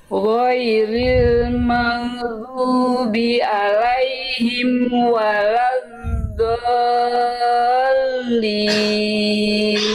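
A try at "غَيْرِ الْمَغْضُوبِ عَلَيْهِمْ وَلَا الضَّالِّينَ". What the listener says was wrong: Lagi Bunda dilafalkan serupa seperti tadi, tapi hati-hati di bagian alaihim ainnya kurang kuat ya tadi ya.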